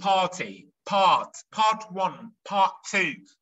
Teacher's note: British accent يعني حرف الR في الاخر بيقع. We drop the R at the end.